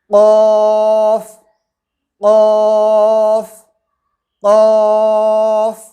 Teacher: زبان کی جڑ کو کوے کے متصل، کوے کے قریب تالو پر لگا کر موٹی آواز میں کہیں گے قاف قاف قاف۔